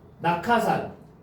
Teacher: 기역 받침이 히읗을 만났지. 기역 받침이 히읗을 만났죠. 그래서 뭐로 바뀌었어요? 키역으로 바뀌었죠. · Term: 거센소리 대기